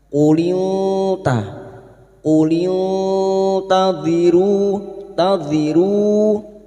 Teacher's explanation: Kita samarkan bunyi nun sukun dan mendengung selama tiga harakat. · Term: ik hakiki